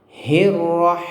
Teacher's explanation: huruf ha itu makhrajnya di sini, di tengah tenggorokan ya, seperti ada aliran angin dan sifatnya tipis. Hirrahmani, seperti itu.